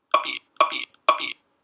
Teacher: Again, we get not quite silence, but almost silence during the closure. We have this nice sharp burst here. This is going to be the burst of the puh. But no aspiration. It goes straight into the next vowel.